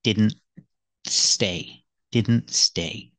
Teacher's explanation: with didn't, the T is between consonants. So we don't really hear the T. He didn't. It's really a stop T.